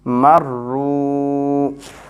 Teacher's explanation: Waw with sukoon after dhamma, it is madda letter, so we make it longer.